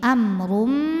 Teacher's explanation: bighunnah karena ada tanwin dhomah menghadapi huruf mim maka cara bacanya tanwinnya masuk ke mim amrun disertai bunyi dengung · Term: idgham bighunnah